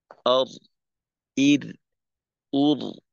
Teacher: র এর উচ্চারণটাকে ফ্রেশ রাখতে হবে ইর একবার করে আওয়াজ হবে যেন বারংবার